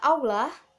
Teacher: Pada kata aula, bunyi A rendah dan berada di belakang dan berbentuk bulat